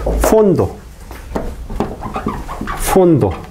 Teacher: Esto es consonante nasal. Después de consonante nasal, siempre se pronuncia con la oclusiva, nunca con la fricativa.